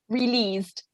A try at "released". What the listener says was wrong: nice perfect